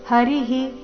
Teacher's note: ವಿಸರ್ಗದ ಉಚ್ಚಾರಣೆ ರಸ್ವಹಿ ಹರಿಹಿ